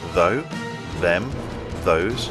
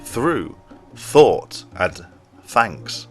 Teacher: they are both made by putting your tongue in the same position but one is voiced while the other is unvoiced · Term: th sound